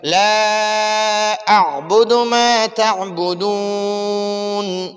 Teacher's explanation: لا پر تھوڑا سا مد کریں گے، یہ تھوڑا سا اس کو کھینچیں گے، لمبا کریں گے